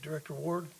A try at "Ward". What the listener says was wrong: You have to finish that D.